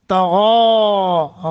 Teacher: غین کو موٹا کریں گے، کھڑی زبر ہے لمبا کریں گے